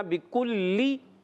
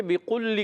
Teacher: کھڑی حرکات جب کبھی آئیں، الٹا پیش ہو، کھڑا زبر ہو، کھڑی زیر ہو، تو کھڑی حرکات کو ایک الف کھینچنا ضروری ہوتا ہے، یہ حروف مدہ ہی کے قائم مقام ہوتے ہیں۔ بکلی، با کے نیچے زیر ہے، بغیر کھینچے ادا کریں، کاف کو باریک رکھنا، بکلی۔ اچھا، بعض بچے بقلی کر دیتے، کیا پڑھتے ہیں؟